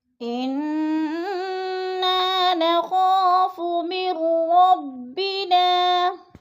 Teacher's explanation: انا میں نون مشدد ہے، سختی سے جما کر پڑھیں گے، غنہ کریں گے اور نا کو تھوڑا سا کھینچ کر پڑھنا ہے، الف مدہ۔